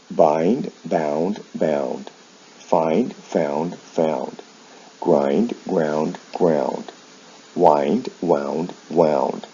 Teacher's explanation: and you'll see the sound shifts here with verbs like find they involve a vowel change in the past in the past participle from I to ow the consonant sounds remain the same